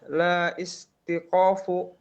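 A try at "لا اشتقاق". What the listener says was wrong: ishtiqaqa. Itu hamzah wasal tidak diucap. La ishtiqaqa.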